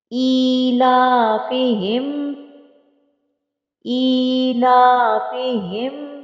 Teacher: حمزہ کے نیچے کھڑی زیر ہے، لام کے اوپر کھڑی زبر ہے، دونوں کو ایک الف کی مقدار کے برابر کھینچ کے پڑھیں گے۔ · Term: کھڑی زیر اور کھڑی زبر